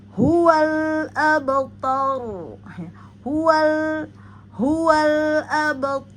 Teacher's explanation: huruf hidup ya dia berharakat fathah domah maka pada ro maka terjadi tafhim ya huruf ro tebal